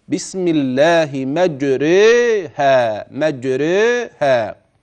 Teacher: الفتحه ستتجه للكسر والالف ستتجه الياء سيحدث للالف اماله احدى او احد حالات ترقيق الراء بالنسبه لحفص